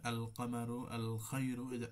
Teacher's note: একটা হচ্ছে ইজহার, মানে সেটা হচ্ছে স্পষ্ট করে আল কামারু আল খায়রু, আল এটা ইজহার করে পড়া মূল উচ্চারণ